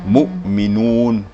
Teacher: Mu bukan mu ya, mu. Jangan mengarah o tapi mengarah u. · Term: dhammah